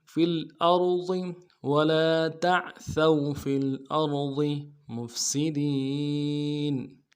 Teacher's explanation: را کو موٹا ادا کریں گے، ضاد کو موٹا ادا کریں گے